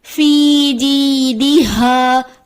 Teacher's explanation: یا مدہ کو ایک الف کے برابر کھینچ کر پڑھتے ہیں، یہاں پہ یا مدہ کی ادائیگی کو واضح کر کے پڑھیں گے، جیسے فی جیدہا۔